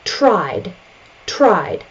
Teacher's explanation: There's no additional syllable. The I sound is voiced, so we continue on with the voiced D sound.